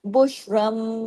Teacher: नून की आवाज मीम में बदल जाएगी